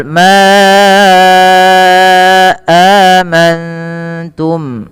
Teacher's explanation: panjangkan lafal ma sepanjang 4 atau 5 harakat karena ia ada mad jaiz munfasil. Mad jaiz munfasil adalah mad yang terjadi karena adanya mad tabi'i yang bertemu dengan huruf hamzah dan hamzah tersebut pada lain kata.